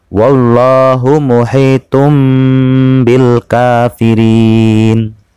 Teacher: Ada dhammah tain bertemu dengan huruf ba, maka dibaca membalik membentuk huruf mim dan berdengung selama 1,5 alif atau 3 harokat. Wallahu muhitum bil kafirin. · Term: Ikhfa